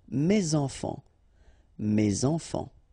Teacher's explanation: Enfant, children is starting with a vowel, so you should make the liaison